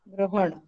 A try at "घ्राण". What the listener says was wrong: ग्रहण नहीं, घ्राण। घ में नीचे र और अणा, घ्राण। एक मिनट देखो, हाँ बड़ा घ, दीर्घ घ।